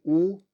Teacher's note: you you should feel your tongue moving back and forth uh you are also rounding your lips for ooh · if you say oo you should feel that it's pretty far back